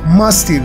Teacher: penúltima sílaba el acento en más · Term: grave